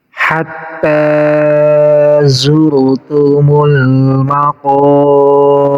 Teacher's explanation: Hatta di sini panjang 2 harokat jadi mad badal.